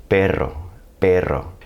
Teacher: going to have a r sound so what I'm doing is taking my tongue putting it on the roof of my mouth near the front of my mouth and just letting it bounce a little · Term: Trill